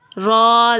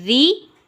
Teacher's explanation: यहाँ देखिए रॉ के ऊपर ज़बर और पेश ऊपर लिखी हुई है, और ज़ेर नीचे है। तो जब हमने रा के ऊपर ज़बर और पेश को अदा करना है तो रा को पुर करना है, और जब ज़ेर को अदा करना है तो रा को हमने बारीक पढ़ना है।